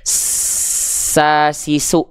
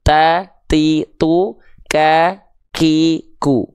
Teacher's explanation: Kalau huruf sin kan sa, si, su, ngalir nafasnya jelas kan, bukan percikan doang kan.